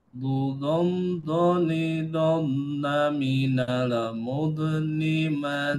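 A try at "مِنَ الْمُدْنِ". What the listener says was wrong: mantul. Do, nggak boleh mantul. Minal mud. Jadi ada namanya suara ar-rohawah itu. Kayak dia mengalir dia. Jadi minal mud. Nggak boleh. Mud. Ini nggak boleh ngerem. Jadi dia tidak boleh ngerem, harus mengalir dia.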